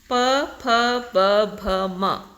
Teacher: ಎರಡು ತುಟಿಗಳು ಸೇರಿ ಉಚ್ಚಾರಣೆ ಆಗುತ್ತೆ ತಕಂತದ್ದನ್ನ ನಾವು ಓಷ್ಟ್ಯ ಅಂತ ಕರೀತೀವಿ ಓಷ್ಟ ಅಂದ್ರೆ ತುಟಿಗಳು ಸೋ ತುಟಿಗಳು ಸ್ಪರ್ಶಿಸಿ